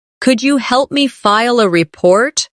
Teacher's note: Could you becomes could ya in natural speech.